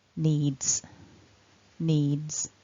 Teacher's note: because of the voiced d ending on the verb need, our s is actually pronounced as a voiced consonant z, so needs, needs.